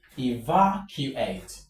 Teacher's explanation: From the end of the word, you count 1, 2, 3. So the stress goes on va.